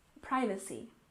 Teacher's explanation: we stress the first syllable in privacy